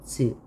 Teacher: 센 입천장이면서 파찰음인 거